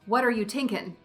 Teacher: For an Irish character, an author may change TH sounds to T and ING endings to IN.